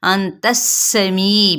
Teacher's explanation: ता की ज़बर को सीन के साथ सीन पे सीटी को वाजे करेंगे